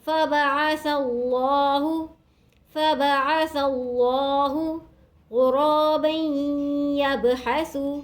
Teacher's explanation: فبعث اللہ غرابا يبحث، رولی زبر الف مدہ الف کی مدار کیجیے گا، رو کو موٹا پڑھیں گے، رو کے اوپر یہاں زبر ہے، دو زبر کی تنوین کے بعد یا مشدد ہے، دو زبر کی تنوین کو یا مشدد سے ملائیں گے غنّے کے ساتھ۔